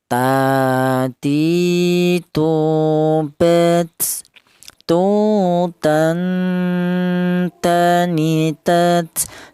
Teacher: huruf ta ini keluarnya huruf berasal dari ujung lidah menyentuh pangkal gigi jari bagian atas.